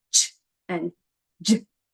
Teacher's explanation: they kind of combine the fricatives and a stop sound together so they're have a lot of friction but they're stop sounds